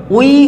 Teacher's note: একটা স্বরধ্বনি আর একটা অর্ধস্বর যুক্ত হবে ভালো করে খেয়াল করো ওই উচ্চারণ করতে গিয়ে আমরা কিভাবে উচ্চারণটা করছি ওই অ পুরোপুরি উচ্চারণ হলো তাহলে একটা পূর্ণ স্বর তাই ওটা হচ্ছে একদম পূর্ণ স্বর। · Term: যৌগিক স্বরধ্বনি